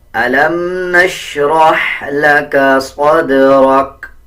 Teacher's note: اکثر لوگ صاد اور سین میں کوئی بھی فرق نہیں رکھتے بلکہ صدرک پڑھ دیتے ہیں، صدرک نہیں، صاد کو موٹا پڑھیں گے، دال پہ قلقلہ کریں گے، اسی طرح را کو پر پڑھیں گے یعنی موٹا پڑھا جائے گا۔